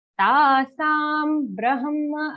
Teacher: her sound comes first, half her, and then ma in brahma